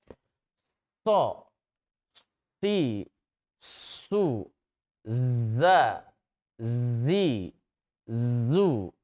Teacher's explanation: Suara tambahan yang keluar dengan kuat di antara ujung lidah dan gigi seri. Ada suara tambahan. · sifat sofir, ada suara tambahan seperti desis yang keluar, ya, ketika mengucapkan 3 huruf sofir ini. Contoh huruf shad, membacanya bukan so si su, tetapi ada desisnya dulu.